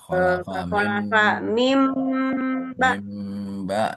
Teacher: Makanya istilahnya juga menukar bunyi. Kalau bunyi nun, nun sukun n kan jadi bunyi em. Jadi di aslinya min menjadi mim ba. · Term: iqlab